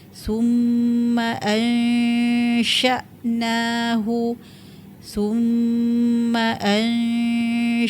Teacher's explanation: syin tu kita kata tengah lidah dengan tengah lelangit